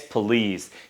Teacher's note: Guys, it's not police, it's police. Here we don't have O sound, we have schwa sound. In that case, it's schwa sound.